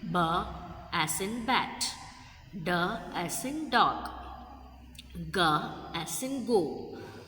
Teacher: Voiced sound produced with vocal cord vibration, creating a buzzing sensation.